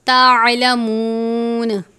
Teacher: واو سے پہلے پیش ہو تو واو مدہ تھوڑا سا لمبا کر کے پڑھیں گے